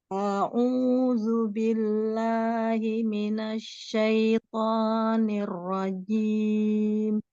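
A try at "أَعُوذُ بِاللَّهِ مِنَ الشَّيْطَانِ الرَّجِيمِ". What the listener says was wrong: Coba bilang aku. Apa bilang aku? Kok beda ya sama A-nya beda. Coba lagi A-nya kayak gitu.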